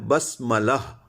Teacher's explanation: بس سین پہ ہے ہمس